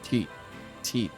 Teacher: Just put the tip of your tongue between your teeth and blow out air.